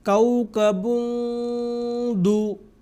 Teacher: تو یہاں پہ تنوین کی جو آواز ہے وہ اخفا یہاں ہوگی۔ کوكب دو، ہم یہ نہیں پڑھیں گے کوكبٌ دو، بلکہ کوكب دو، یہ اس کی آواز ہوگی۔